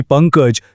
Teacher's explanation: समजा अनुस्वारानंतर क किंवा ख आलं तर त्या अनुस्वाराचा उच्चार ङ असा होतो.